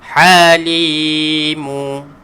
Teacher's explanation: Jadi li ni kena panjangkan sebab ada huruf ya. Huruf ya yang tidak berbaris berfungsi sebagai huruf mad.